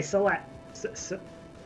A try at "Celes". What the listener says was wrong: I usually say it as Celez, personally, so it's more of a Z than an SS sound at the end of it.